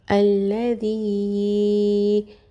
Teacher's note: تین الف کے برابر کھینچ کے پڑھیں گے یا کو۔ الذی، کیونکہ یہاں پر جو ہے وہ یا کے نیچے زیر ہے تو یا مدہ بھی آ رہا ہے اور اس کے اوپر مد بھی ہے۔